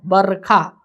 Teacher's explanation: र के बाद अ का उच्चारण नहीं है